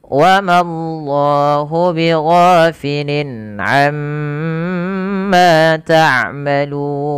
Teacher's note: Pada lafal wa mallahu, Allahnya tebal, lafzul jalalah lam tafkhim, bighafilin gha mad tabi'i fathah bertemu alif kecil, lin ada izhar halqi, dibaca dengan jelas suara linnya karena bertemu dengan huruf ain. · Amma tahan bunyi suara mimnya karena ia ada bacaan gunnah.